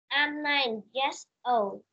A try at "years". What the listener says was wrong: Years old, not yes old nha con. Years nha, âm ear, years.